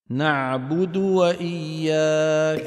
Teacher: خلط صوتها بالسكون وذلك بسبب عدم ضم الشفتين بالمقدار المطلوب